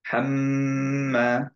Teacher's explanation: হাম্মা ধরে রাখবো বিকজ হচ্ছে গুন্না দিচ্ছি আমরা